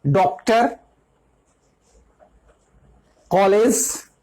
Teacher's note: आ और ओ के बीच की ध्वनि है, जो अंग्रेजी के आकारांत शब्दों में लगती है, जैसे डॉक्टर, कॉलेज, ये आ और ओ के बीच की ध्वनि है।